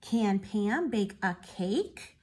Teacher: Remember, it had a question mark, so make your voice go up at the end.